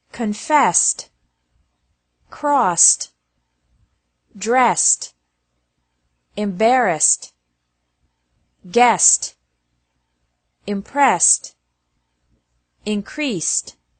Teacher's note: ED is also pronounced like T after verbs ending with an S sound.